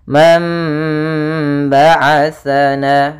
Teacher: sukun bertemu dengan ba maka ini kita baca dengan bacaan iqlab iqlab yaitu membalikkan suara Nun kepada suara mim sehingga di sini nunnya tidak lagi Dibaca tapi ganti dengan mim · Tapi kami mengambil yang dengan idbaq. Mam yaitu bibir kita rapat. Mam sambil ditahan suara gunnahnya 2 harakat.